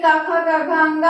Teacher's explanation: का वर्ग में का, खा, गा, घा, अंगा आता है। इसका उच्चारण स्थान कंठ है